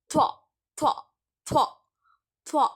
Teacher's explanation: அந்த துவா சொல்லும் பொழுது அந்த நாக்கு உங்களுடைய மேல் பல்லில் வந்து படும். இரு மேல் பற்களில் படும். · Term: துவா சவுண்டு